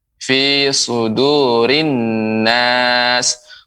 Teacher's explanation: huruf sin, ya lebih jelaskan. Misalnya fi sudurin nas, diberikan desisnya lebih banyak